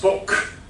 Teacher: Books is pronounced book, and that's a consonant cluster problem. So the person has deleted the S, deletion, in the consonant cluster ks